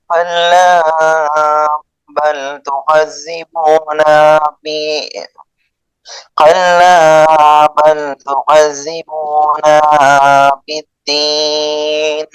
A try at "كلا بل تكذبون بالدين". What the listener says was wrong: তুকাযযিবু, না নাটা টান হবে না, হ্যাঁ। আবার বলেন তো। কাল্লা বাল তুকাযযিবুনা বিদ্দীন। এরপরে নাটা টান দিবেন না, এরপরে বলেন।